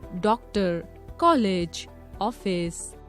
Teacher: इसका आधे ह के समान उच्चारण होता है, जैसे प्रायः, प्रातः आदि। अर्धचंद्र, इसका उच्चारण ओ तथा औ के मध्य की ध्वनि के रूप में होता है।